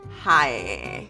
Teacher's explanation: I feel like Michigan's typical accent is very nasally